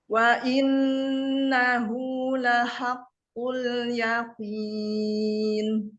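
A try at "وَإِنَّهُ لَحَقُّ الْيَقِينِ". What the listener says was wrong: Iya, qafnya ada tasydidnya. Wa innahu lahaqqul yaqin.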